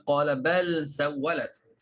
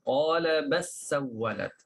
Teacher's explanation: Lam pada kalimah bal masuk ke dalam sin.